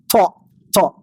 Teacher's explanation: Hujung lidah menekan pada gusi gigi depan atas. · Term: huruf ta